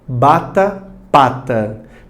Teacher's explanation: Porque eles vão ter alguma interrupção nessa passagem de ar. Nisso, existem pronúncias que são chamadas de bilabiais, que a interrupção é dos 2 lábios. Por exemplo, letras B e P.